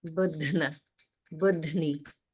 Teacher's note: So here in this word, there's a Mahaprana, dha, but it's combined with na. So this is definitely a challenging one to pronounce because of the combination of the sounds and because the Mahaprana is coming in first.